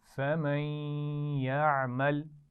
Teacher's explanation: ملا کر بھی پڑھیں گے اور غنہ بھی کریں گے